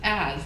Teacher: has is as, the H is dropped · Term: deletion